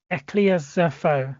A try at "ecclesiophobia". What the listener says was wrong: Ecclesioph is not ecclesiophobia.